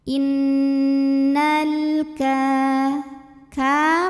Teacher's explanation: Lalu ada hukum alif lam, namanya alif lam qomariyah. Karena alif lam menghadapi huruf qamariyah yaitu kaf, maka lam sukun kita bunyikan dengan jelas ya, atau disebut dengan izhar qamari.